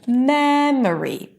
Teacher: if we take the word memory the primary stress is on the first syllable